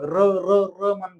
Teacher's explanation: कारण र चा उच्चार करताना जीभ ही थरकापते बघ. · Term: कंपित वर्ण